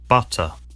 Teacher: T sounds are pronounced as hard T's, in other words, voiceless T sounds. In the US, they sometimes sound like D, an alveolar tap instead of T, an alveolar stop.